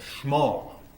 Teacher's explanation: we're going to go to a schwa in the first syllable and an o vowel in the second syllable